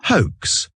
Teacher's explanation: non seulement en anglais, le H on le prononce, mais également le OA, c'est une diphtongue. Une diphtongue, c'est une association de deux voix, de deux sons.